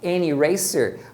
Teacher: E isso é simplesmente para facilitar a pronúncia, porque é muito mais fácil você emendar an eraser do que falar separado duas vogais